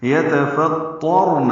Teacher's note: پچھلی آیت میں بھی سماوات پڑھا ہے، میم واو کو دو حرکات لمبا کریں گے. یتفطرن، اس میں تو پر ہے، پہلے تا باریک ہے، را بھی پر ہے کیونکہ تو پر زبر آئی ہے. یتفطرن، نون کو لمبا نہیں کرنا.